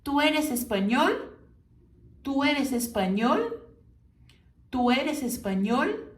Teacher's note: e ele no final bem pronunciado lá no céu da boca · com as vogais E O mais fechadas e com o L bem pronunciado no final. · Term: E O fechado